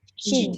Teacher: Dia penuh keluar angin tu melebihi daripada sofir. · Dia menolak angin itu bukan dekat depan Kalau kat depan dia jadi sin, dia dekat tengah. Sebenarnya kalau shin ni kita tak muncung pun dia jadi. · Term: tafashi